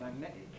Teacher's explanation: What will Cockneys do to it? Glottal stop